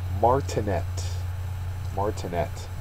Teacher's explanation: The last syllable is the accented one, the third syllable.